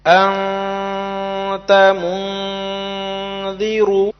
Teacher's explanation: اخفاء کی مقدار 1 الف ہے